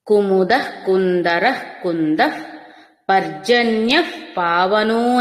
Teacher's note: పర్జన్యఃలో ఉన్న విసర్గ కూడా పర్జన్య గాలి వదిలినట్టుగా అవుతుంది